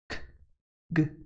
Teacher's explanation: it is produced with the back of the tongue near the soft palate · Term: velar